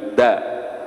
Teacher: Awal punggung lidah diletakkan di belakang gigi seri atas, ya. Di belakang gigi seri ya jamaah, bukan di depan gigi seri, ya. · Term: huruf da